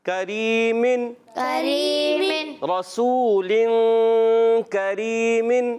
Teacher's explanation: اخفا کریں گے یعنی ایک الف کا غنہ کریں گے, ناک میں آواز لے جائیں گے